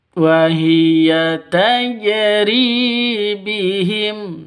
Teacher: ri panjang dua ketukan karena ada ya mati diawali dengan kasrah mad asli atau mad thobi'i.